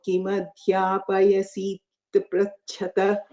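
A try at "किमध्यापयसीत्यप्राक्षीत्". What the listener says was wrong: Adhyapayasitya, that yakara was not sounded completely.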